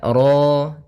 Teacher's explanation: di sini ro tafkhim rnya tebal ya kita namakan dengan ro tafkhim